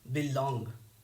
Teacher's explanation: This word has two syllables and second syllable is long, that's why it is stressed. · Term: Iamb